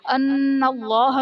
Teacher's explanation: ان اللہ میں نون مشدد ہے، غنہ کر کے پڑھیں گے